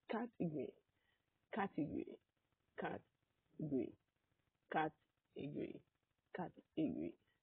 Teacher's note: Believe it or not, this is a four-syllable word. First syllable is cat. And that's the syllable that carries the primary stress. Cat. Actually, is a syllable that you hear very clearly in this word, category. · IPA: /'kætəgəri/